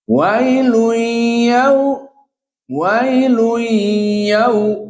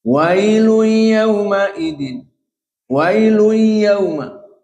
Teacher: Idgham, tanwin masuk ke ya, itu idgham maknanya. Adapun dua harokat bi gunnah, maknanya di sini makhrajnya dari hidung, dari khaysum, dua harokat · Idgham na'am, namun tidak ada gunnah. Jadi maksudnya idgham masuk tanwin kepada ya.